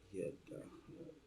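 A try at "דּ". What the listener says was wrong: that, in this case, that vowel sound will drop off. You're just gonna get the consonantal. So smooth that out. Just skip it.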